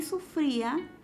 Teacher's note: la cerrada suena más tiene mayor acento que la vocal abierta en consecuencia se relaciona con la primera es un hiato acentuará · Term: hiato acentual